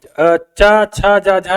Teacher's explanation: स्पर्श संघर्षी तो ये चा वाली लाइन होती है, चा है, छा है, जा है, झा है और ये स्पर्श संघर्षी होते हैं।